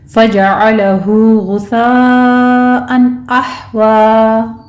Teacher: अहवा में हा वस्ते हलक में जाके स्टॉप करेंगे